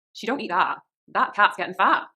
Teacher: the a sound becomes stronger and becomes ah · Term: West country